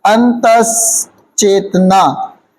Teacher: विसर्ग के बाद में तालु से उच्चारित होने वाला व्यंजन आता है तो विसर्ग तालव्य सा में ही बदलता है